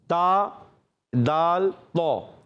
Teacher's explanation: زبان کا سرا اوپر کے دانتوں کی جڑوں سے تا ادا ہوتا ہے، دال ادا ہوتا ہے، تو ادا ہوتا ہے. ان کو کہتے ہیں حروف نطعیہ.